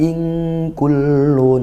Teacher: nun sukun bertemu kaf, ikhfa haqiqi, dibaca samar dan dengung gitu ya. Bainal izhar wal idgham, tidak jelas nunnya, tidak benar-benar jelas in, tapi tidak juga masuk gitu ya, tidak tidak masuk ke kaf, tapi ing masih ada nunnya sedikit, dan juga samar-samar masuk ke huruf kaf.